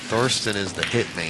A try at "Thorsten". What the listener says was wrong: Torsten. You said Thorsten that time. I had to bust you that time.